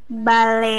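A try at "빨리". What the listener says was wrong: Pale, bukan bale.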